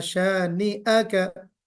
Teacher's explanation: शानिआ का में थोड़ा सा हमजा जो है वो और वाज़े होना चाहिए